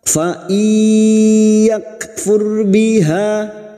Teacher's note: Fa iyakfur biha, yak kaf sukun lagi yang memiliki sifat siddah dan hamas, yak ra sukun yang didahului dhammah kita baca tafkim.